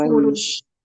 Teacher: qaf, bukan kaf ya, bukan ku tapi dari pangkal lidah.